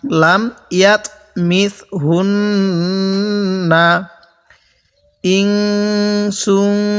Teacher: এই নুন সাকিনের মধ্যে গুন্না হবে, এই তানবিনের মধ্যে গুন্না হবে